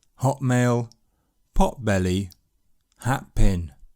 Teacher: When /t/ is followed by bilabial sounds /p,b/ or /m/ it can change into an unreleased /p/